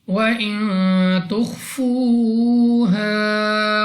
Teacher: نون ساکن کے بعد تا حروف اخفا میں سے ہے، غنہ کیا جائے گا۔ خا مستعلیہ میں سے ہے، پر یعنی موٹا پڑھیں گے۔